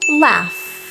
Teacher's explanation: that F sound is voiceless you don't feel a vibration on your throat if you put your hand there so the Ed is pronounced as a t laugh rule number